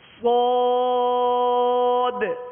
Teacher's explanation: ہونٹوں کو گول نہیں کریں گے، سواد نہیں پڑھیں گے